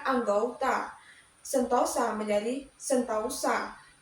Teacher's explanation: perubahan bunyi vokal tunggal menjadi dua bunyi vokal rangkap dua atau diong secara berurutan. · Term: diftongisasi